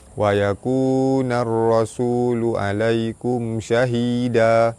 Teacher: alif lam bertemu dengan ra, alif lam syamsiah terus masuk ke ra, ra baris atas dibaca tebal.